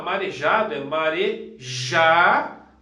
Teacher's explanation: no caso aqui, a sílaba mais forte é o já. Isso também é uma paroxítona, tá?